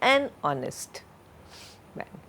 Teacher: So, an honest man, and remember, we do not, because honest H is silent, therefore, an honest man. We do not pronounce the alphabet or sound H here.